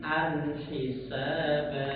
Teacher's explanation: Huruf hamzah tanwin bertemu ha, ya, itu tidak boleh dikolkolan. Jadi an hisaba, jangan jangan, tapi an hisaba.